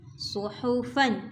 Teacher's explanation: ہا جو ہے حلق سے نکالیں گے اور صاد اس کو موٹا بھی کریں گے اور سیٹی والا بھی